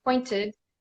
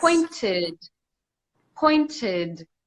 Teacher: Point, ed, pointed. So after T or D, ed makes the id sound.